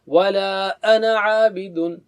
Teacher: انا کے بعد جو ہے نا مد ہے، الف مد، لیکن اس کو نہیں پڑھا جاتا روانی میں. آپ ایسا نہیں پڑھیں گے ولا انا عابد، ایسا نہیں.